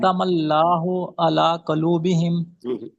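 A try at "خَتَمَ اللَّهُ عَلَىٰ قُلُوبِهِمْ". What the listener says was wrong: कालूब नहीं है, काफ के ऊपर पेश पड़े।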